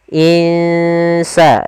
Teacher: Kita samarkan nunnya ke huruf sin. Insa, dan itu ikhfanya ikhfa tipis.